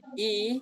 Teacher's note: lidah terangkat, tengah lidah terangkat, tapi tidak sampai nempel ke atas. Tidak sampai tekan ke atas. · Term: ya mat